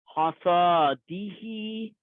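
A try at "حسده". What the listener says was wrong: There's no alif here.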